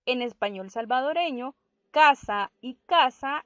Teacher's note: En español salvadoreño, casa y casa no sería un par mínimo, porque nosotros pronunciamos ambas palabras de la misma manera.